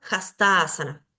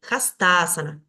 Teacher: estas dos a se unen y forman una sola a larga